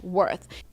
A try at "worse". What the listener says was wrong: I think she means worse. Let's look at the pronunciation difference. When I say worth, I have the TH. I put my tongue out. I make the air sound, no voice. Worth. And now we look at the word worse. The first part of the word is the same.